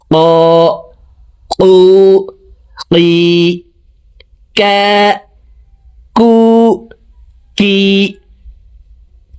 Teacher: কাফ হরফের উচ্চারণ জিহ্বার গোড়া থেকে একটু আগে বাড়াইয়া তার বরাবর উপরের তালুর সঙ্গে লাগাইয়া উচ্চারণ করে পড়ব।